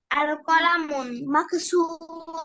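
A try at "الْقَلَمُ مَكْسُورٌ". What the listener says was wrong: আল কলামুন বলেছো, শেষে এন উচ্চারণ করেছো, আল কলামুন তানবিন সহ। এটা কি ঠিক হয়েছে? যেহেতু আগে আলিফ লাম আছে, এটা ডেফিনিট না? আমরা একটু আগে পড়েছি না, ডেফিনিট হলে আলিফ লাম আসলে তখন লাস্টে এন ড্রপ হয়ে যাবে।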